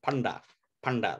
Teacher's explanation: spelled like panda but with little dots on the n d it becomes panda panda with the retroflex